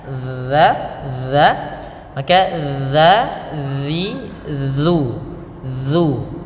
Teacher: Nah, di sini kita usahakan membacanya dengan dza. Bagaimana huruf dzal, yaitu ujung lidah kita usahakan tempelkan dengan gigi 2 kita